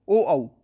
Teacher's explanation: कंठोष्ठ होते हैं ये ओ औ